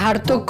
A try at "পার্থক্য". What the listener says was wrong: ওই ওটা হার্থক্য না, পার্থক্য। ভাই আপনারা নোয়াখাইলারা নাকি প উচ্চারণ করতে পারেন না, পরে হ বলেন।